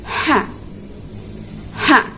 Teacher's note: Huruf H keluarnya adalah dari tengah tenggorokan.